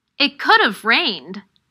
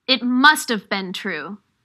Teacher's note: the auxiliary verb have is difficult to hear because it is usually pronounced as a schwa